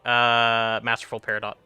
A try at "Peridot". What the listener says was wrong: It's Peridot. Because the T is silent. You're Canadian, you should know all about weird pronunciations, and it's also a French pronunciation.